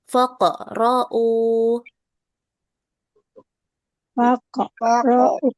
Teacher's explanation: Tayib, u-nya dibaca tebal, eh dibaca panjang ya, dua harakat